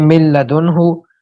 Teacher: नून को लाम बनाकर दोनों लाम को एक कर दिया, चनाचे पढ़ने में सिर्फ लाम आता है, अगरचे लिखने में नून भी बाकी है। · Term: इदगाम